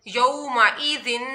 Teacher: यौमइज़िन, यौ वऊ साकिन है और उसके बाद पहले ज़बर आ रहा है तो यहाँ पर यऊ पढ़ा जाएगा, इसको लंबा नहीं किया जाएगा क्योंकि वऊ साकिन से पहले ज़बर है तो वऊ मदा नहीं, वऊ लीन हो रहा है।